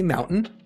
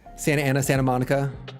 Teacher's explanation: I have a California accent where I don't pronounce the T's in my words or consonants and kind of slur things together